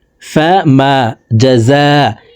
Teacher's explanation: ইজাতে 4 আলিফ টান মদার হরফের উপরে মোটা চিহ্ন বামে হামজা মধ্যে মুত্তাসিল 4 আলিফ টানিয়া পড়িতে হয়